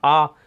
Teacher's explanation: इधर आ मतलब किसी को बुलाना तो बहुत ज़्यादा से मुंह खोलना पड़ेगा, आ, ठीक है।